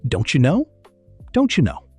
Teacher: Don't you becomes don't ya.